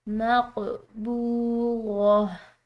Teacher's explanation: قاف ہے حروف قلقلہ میں سے، اس کو ہلاتے ہوئے ادا کریں گے ، اور یہاں پر جو واو ساکن ہے یہ واو مدہ